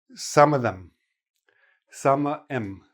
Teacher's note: most native speakers will just drop the TH altogether and just say M.